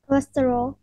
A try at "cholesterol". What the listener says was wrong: Close. It's not casserole. Casserole is a dish. But it's close. It sounds like that.